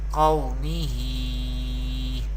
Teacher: So this is, therefore waw leen rule is happening here, and qaf is belongs to mustalia family. So we pronounce qaf with thicker voice in every condition. And ha has vertical harakat, vertical zer.